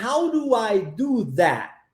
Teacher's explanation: that interessante também a omissão do último T na pronúncia né ao invés de falarmos do that e darmos esse essa ênfase no t a gente omite o som do t e e pronunciamos but How do I do that viu that